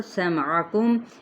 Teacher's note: عین کو وسط خلق سے